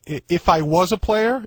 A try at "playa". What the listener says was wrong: Not player, playa. No R.